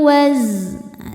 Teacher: Wa aqimul waz. Zai ada desisannya ya, sofir seperti suara lebah.